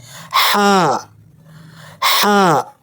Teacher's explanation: حلق کے درمیانی حصے یعنی وسط حلق سے زور کے ساتھ پڑھیں